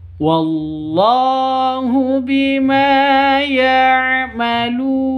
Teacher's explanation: Bima panjang dua ketukan. Karena ada alif diawali dengan fat fathah. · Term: Mad thobi'i